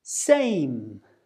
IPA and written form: seɪm (same)